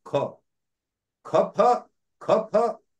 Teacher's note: the tongue first goes back, goes ahead to take the ha, and then the vowel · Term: aspirated letters